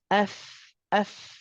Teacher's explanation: You're using the inside wet part of your lip, bottom lip, and that is touching the upper 2 incisors. F, F. So the lips are still visible. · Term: letter fa